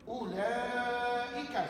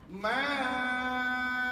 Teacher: Mad wajib muttasil 4 atau 5 harakat.